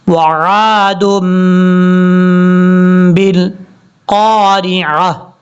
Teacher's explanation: پر دال کے اوپر 2 پیش ہیں، پھر چھوٹا میم ہے، یہ چھوٹا میم جہاں پر بھی آ جائے وہاں پہ جو ہے غنہ کیا جاتا ہے، آپ نے یہاں پر غنہ کرنا ہے 2 سیکنڈز کے قریب